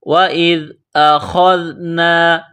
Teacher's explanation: جس طرح انسان گلے سے بلغم نکالتا ہے اسی طرح خا کو نکالیں گے۔ خا کو ذال کے ساتھ ملائیں گے، ذال کو باریک کریں گے۔